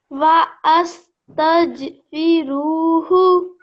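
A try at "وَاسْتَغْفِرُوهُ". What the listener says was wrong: So this is not wa'as, this is was. This is a blank alif. It doesn't have any strokes on top, so you just ignore it.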